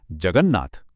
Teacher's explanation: जगत का त जब नाथ के न से मिला तो खुद भी न बन गया और बन गया जगन्नाथ। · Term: नेजल अक्षर